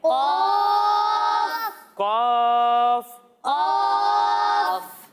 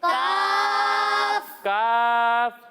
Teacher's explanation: ہم قوف کو موٹا پڑھیں گے اور کاف کو باریک پڑھیں گے